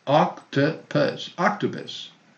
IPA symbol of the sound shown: ə